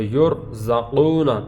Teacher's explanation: یہ قاف ویسے ہی حروف مستعلیہ میں سے ہے تو اس پر زبر زیر پیش جو بھی آئے اس کو پر ہی پڑھیں گے. یرزقون واو ساکن سے پہلے پیش ہے، اس کو لمبا بھی کریں گے.